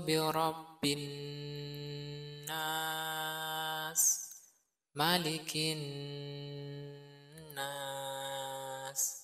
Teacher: Namun tentu ada perbedaan yang jelas di sini bahwasanya mimnya ini dibaca pendek. Nah, nun di sini semua ini harus dengung karena setiap nun bertasydid namanya gunnah musyaddadah. Dia ditekan dan didengungkan.